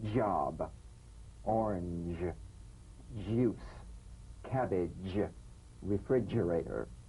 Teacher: Use a light, quick energetic staccato treatment and feel a voiced percussive sensation flowing from the hard palate onto the gum ridge.